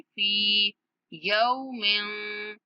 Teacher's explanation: फा के बाद या मद है, फा को थोड़ा खींच के पढ़ेंगे। फी यौमिन, मीम की आवाज पर हमने इख्फा करना है।